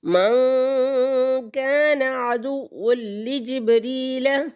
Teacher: اخفا کریں گے، غنہ کریں گے، 2 حرکت کے برابر ناک میں آواز کو چھپائیں گے۔ تو یہاں پر نون ساکن کے بعد کاف حروف اخفا کے 15 حروف میں سے آ گیا۔